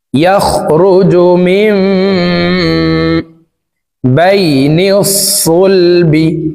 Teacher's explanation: ইয়াখরুজু মিন, ইয়াখরুজু মিন, মিম এখানে ইকলাব গুন্নাহ, নুন সাকিনের পরে ইকলাবের হরফ বা আসছে, এই কারণে এই নুন সাকিনকে এই মিম দ্বারা পরিবর্তন করিয়া গুন্নার সহিত পড়ব